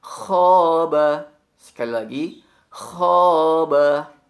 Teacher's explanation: Ucapkan huruf kha ditekan pada bagian atas tenggorokan dengan sifat hamsnya